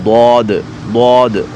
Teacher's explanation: آگے ہے حرف حافیہ یعنی وہ حرف جو زبان کے بغلی کنارے سے ادا ہوتے ہیں